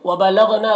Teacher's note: غین کو پر پڑھیں گے، یہ حروف مستعلیہ میں سے ہے